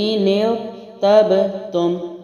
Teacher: را کو ہلانا نہیں ہے، وائبریشن نہیں کرنا. ٹھیک ہے، کلکلا نہیں کرنا، کنٹرول کے ساتھ ہے اور را موٹا ہے. ارتبتم. ٹھیک ہے، نون کی زیر کے ساتھ میں نے را کو ملایا ہے.